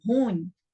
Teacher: quando eu falo ruim, a sílaba mais forte fica sendo ru